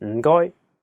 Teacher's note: the first character is in a very low tone fourth tone